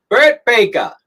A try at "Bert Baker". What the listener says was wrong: It's Bert Baker, not Baker. You don't have an R.